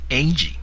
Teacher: the sound goes up first before it drops down